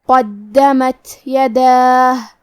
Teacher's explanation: آخری میں یہاں تا ساکن ہے کیونکہ تا حروف الہمس میں سے ہے اور ہمس کا معنی ہے حرف کی آواز ایسے کمزور ہو کہ اس میں پستی پائی جائے، تو ہم یہ کلمہ کو ایسے پڑھیں گے. · کلمت قدمت میں قاف ہے اور قاف کی ادائیگی زبان کے جڑ اور تالوں کے نرم حصے سے ہے. قاف حروف التفخیم میں سے ہے لہذا ہم حرف القاف کو موٹی آواز میں پڑھیں گے. · دال پہ کھڑا زبر ہے تو یہ مد الف ہے لہذا ہمیں مد الف کو ظاہر کرنا ہے